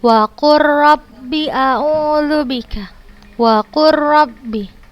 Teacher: kita langsung bacanya ke huruf ro, tidak kita baca lagi huruf lamnya, dan tanpa gunnah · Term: idgham mutaqarribain